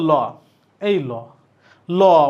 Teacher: র এবার দেখো ল এই ল ল মানে পার্শ্বিক বর্ণ কেন ল উচ্চারণে জিহবার দুই পাশ দিয়ে বাতাস বের